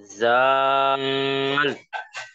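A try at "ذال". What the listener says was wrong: नाक में क्या गुजारी आवाज। हाँ, डायरेक्ट मुंह से अदा करना है ना, वो नाक में लेके जाने का ही नहीं है मसला कुछ भी। जाल। दांतों के बाहर नहीं आ रही, फिर नाक में जा रही। जाल। जबान की नोक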